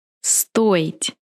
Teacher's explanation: In this verb, I will pronounce O clearly because O is stressed.